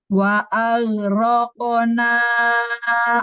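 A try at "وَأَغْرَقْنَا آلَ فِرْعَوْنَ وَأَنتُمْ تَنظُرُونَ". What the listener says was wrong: diulang karena ro-nya kembali. Baca ro-nya suka ro gitu ya, otomatis kayaknya bibirnya maju. Ro, jangan ro, tapi ro. Hati-hati ro-nya ya. Ro-nya suka masih ke maju tuh sedikit.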